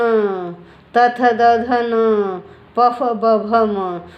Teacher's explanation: हर वर्ग का जो पांचवा वर्ण है ना, वो नाक की सहायता से बोला जाता है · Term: अनुनासिक